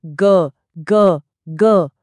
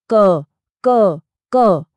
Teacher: एक हाथ अपने गले पर रखिए और बोलिए ग और अब बोलिए क। ग बोलते वक्त वो जो गूंज महसूस हुई ना बस वही है घोषत्व